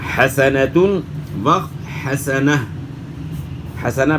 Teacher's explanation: اور اگر گولتا ہے یعنی ہا کی شکل میں جو تا ہوتی ہے، جس طرح آپ یہاں دیکھ رہے ہیں حسنتن، تو گولتا جو ہے اس پہ جب آپ وقف کریں تو یہ ہائے ساکنہ سے تبدیل ہوتی ہے، یعنی وہ ہا جو سکون والی ہو، جزم والی ہو.